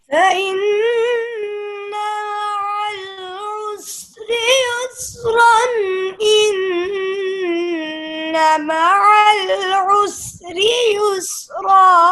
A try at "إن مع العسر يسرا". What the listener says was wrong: रा इतना लंबा नहीं करते। इन्न मअल उसरि युस्रा, युस्रा।